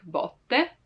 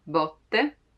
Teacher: with an open sound, botte, like there's a lot of space in between my lingua, the tongue, and the rest of the mouth